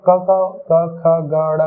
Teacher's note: जब हम क ख ग ड़ का उच्चारण करते हैं तो आपका कंठ का ही उपयोग करते हैं